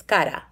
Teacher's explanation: if it's just a single r in the middle of a word and it's not rolled it's still at the tip of your tongue